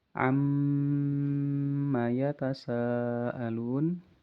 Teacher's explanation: Mimnya ditahan paling lama ya. Nah, bisa dua harakat lebih ya. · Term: gunah yang paling sempurna, mim dan nun bertasydid